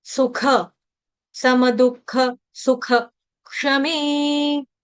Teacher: सुख के आगे जो विसर्ग विसर्ग का उच्चारण आधे ह या हा से हलंत ह से ही करेंगे